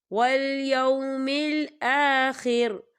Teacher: وقف کی صورت میں را جو ہے ساکن ہو جائے گا